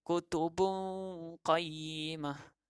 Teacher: Dengung yang tak kuat seperti idgham. Nun dia masih ada. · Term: ikhfa